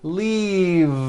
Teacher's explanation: the word is leave with a voiced V